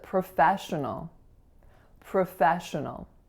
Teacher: So the first syllable is not pro, even though it looks like pro, and even though P-R-O is pro on its own. So the first syllable has a schwa, pro. Our second syllable is the winner.